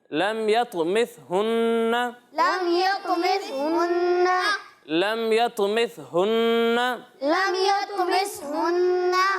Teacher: ثا میں سیٹی کی آواز نہیں آئے گی